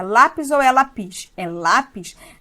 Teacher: Ah, então a tonicidade está no lá. Ela é paroxítona, não terminou em A, E, O, em ou um de seus plurais.